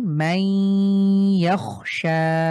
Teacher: মাই এখানে তানভিনে পরে ইয়া হয়েছে, এজন্য আমরা গুন্না করলাম।